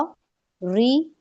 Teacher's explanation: री में आपकी जुबान पीछे से स्ट्रेट हो जाएगी। यानी बारीक पढ़ रहे हैं क्योंकि हमने उसमें नीचे ज़ेर लगाया, कसरा लगाया तो रा ज़ेर री हो जाएगा।